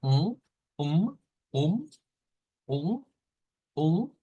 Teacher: Hemos dicho que es una U nasalizada, lo cual suena como una um, um, um, nasalizando.